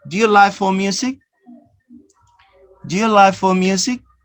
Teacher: Notice here the K sound is not pronounced strongly. It's very soft or disappear.